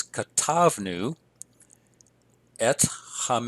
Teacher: we have an accent on the second to last syllable